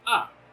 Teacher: the fourth tone, which is just falling